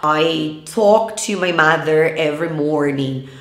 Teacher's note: Isso mesmo, é completamente errado dizer talk ou walk. A gente não pronuncia o L aí